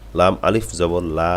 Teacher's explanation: আপনারা লম্বা একটু টান দেন এক আলিফের তিনের চার আলিফ হলে সমস্যা নাই একটু লম্বা টান দেন